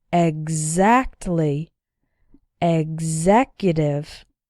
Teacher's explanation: in these words, the X is pronounced like gz